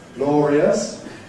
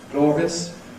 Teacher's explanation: We make it three syllables or two, depending on the scansion of the rest of the verse. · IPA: [ ˈglɔːriəs ], [ ˈglɔːrjəs ]